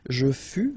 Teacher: keep in mind that final S is not pronounced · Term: final S not pronounced